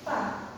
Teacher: untuk fa itu makhrajnya bibir bawah dengan gigi seri atas. Jadi bacanya fa, bukan pa. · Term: fa sukun